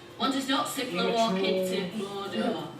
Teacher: It's a much kind of flatter accent from Lancashire, and they cut off a lot of the words. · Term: Yorkshire